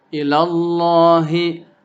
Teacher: lam alif lafzul jalalah dibaca dengan tafkhim karena sebelumnya ada harokat fathah